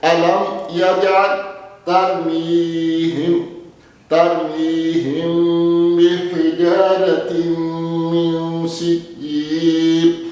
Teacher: میم ساکنہ کے بعد اگر با آئے گا تو کیا ہوگا؟ اخفا ہوگا۔